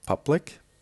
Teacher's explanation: public, 2 syllables, the stress on the beginning.